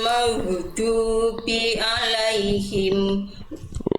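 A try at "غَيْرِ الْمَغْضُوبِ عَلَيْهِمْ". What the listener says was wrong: Nah, jangan berhenti di alaihim. Boleh tadi maghdubinya masih memantul. Maghdubi. Ghairil maghdubi 'alaihim.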